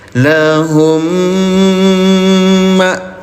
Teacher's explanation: Wa wahabna lahu ahlahu wa mislahum ma'ahum. Mim sukun bertemu dengan mim bertasdid ya, dengungkan cara bacanya, tahan 2 harokat. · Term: idgham mimi